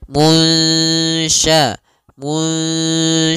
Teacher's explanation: kita samarkan nunnya kepada huruf syin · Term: Ikhfa